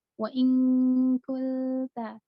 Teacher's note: Nah, kalau huruf kaf, wa in kulta, benar-benar langsung melebur ke huruf kaf. Jadi ada N dan G-nya, tidak hanya N, tapi G. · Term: samarnya benar-benar kamil